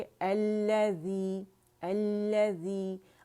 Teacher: जब भी लाम तारीफ़ के बाद शमसी हर्फ आएगा तो ये उसमें मर्ज हो जाएगा, कंप्लीट मर्जिंग हो जाएगी, ठीक है। तो इसे जमाओ से पढ़ेंगे, अल्लज़ी अल्लज़ी, अल्लज़ी करके नहीं पढ़ेंगे, ठीक है। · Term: लाम शमसिया